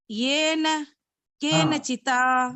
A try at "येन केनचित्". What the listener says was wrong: येन केनचित, चिता नहीं, चित. येन